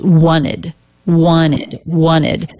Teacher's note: it's the I as in sit vowel and the D sound. So even though the T is dropped, that rule still holds. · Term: ED ending